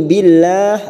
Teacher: lam jalalah yang didahului kasroh kita baca tarkik dan kita panjangkan 4 harokat karena kita wakaf di sini.